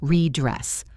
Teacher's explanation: The first word ends in D and the second starts with D. We do not say both distinct D's. We just say one long D sound.